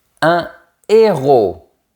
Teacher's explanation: Remarque que je n'ai pas fait la liaison parce qu'il y a un H aspiré.